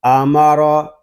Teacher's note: را کے اوپر زبر ہے، را کو ہم پر پڑھیں گے